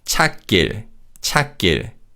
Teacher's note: 시옷 받침 is silent and 기역 in 길 is pronounced as a tense consonant